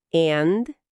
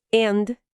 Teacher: O som do e é mais aberto, tipo na palavra bad.